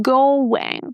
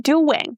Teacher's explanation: A lot of students don't know that there is a little w in between. So we have go and then the word wing. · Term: w sound